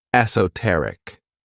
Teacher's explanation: stress is on that third syllable, esoteric. When we describe something as esoteric, we're talking about something that's really understood by a small group of people because they have knowledge or interest in that thing. · the stress is on that third syllable